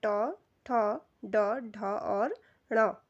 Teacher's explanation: तालु के आगे का भाग और दांत के पीछे का भाग। तो यह स्थान मूर्धा कहलाता है।